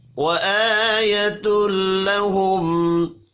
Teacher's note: حمزہ کے اوپر کھڑی زبر ہے، ایک الف کے برابر کھینچ کر پڑھیں گے